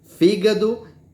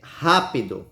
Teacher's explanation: você não vê que é a primeira a antepenúltima sílaba mais forte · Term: proparoxítonas